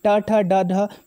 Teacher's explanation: तालव्य जिनका उच्चारण तालु से होता है। मूर्धन्य जिसमें जीभ मुड़ती है